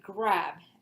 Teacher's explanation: the R sound of English is a retroflex and it is always written as an upside down R symbol.